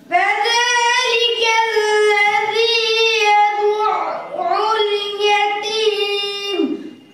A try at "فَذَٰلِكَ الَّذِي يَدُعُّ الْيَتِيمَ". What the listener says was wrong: জবরের মতো হয়ে গেছে, ঝজমের মতো হয়ে গেছে, তাসদিদের মতো হয় না, তাসদিদ ধরতে হবে, ধরে এরপরে আরেকবার উচ্চারণ করতে হবে। فذلك الذي يدعو اليتيم আইন নরম হবে না, শক্ত হবে না, মাঝামাঝি। আইন পাতলা হবে, বুঝে আসছে? পাতলা হবে, মোটা হবে না।